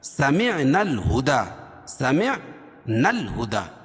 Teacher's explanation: نون کو لام میں ملائیں گے